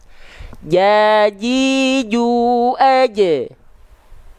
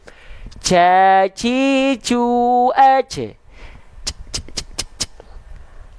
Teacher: huruf Jim itu tertahan nafasnya jahr tertahan nafasnya